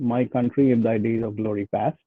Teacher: for example my is not really stressed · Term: unstressed